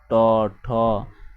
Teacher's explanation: উচ্চারিত হয় আমাদের মূর্ধা থেকে অর্থাৎ তালুর সাথে জিহ্বা উল্টো করে লেগে যায় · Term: মূর্ধন্য ধ্বনি